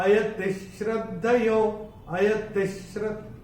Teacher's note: इसका श जब आएगा विसर्ग के बाद तो विसर्ग का उच्चारण आधा श होगा